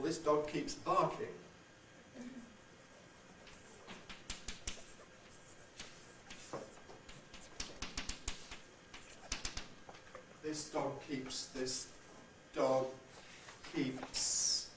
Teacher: voicelessness for the S which spills over into part of the D so the D is not really fully voiced we're going to have a voiceless here and the voicing switches · What we get here is voicelessness for the S, which spills over into part of the D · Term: devoicing effect